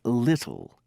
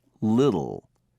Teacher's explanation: in british english it is normally pronounced but in american english it changes to a d or disappears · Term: t sound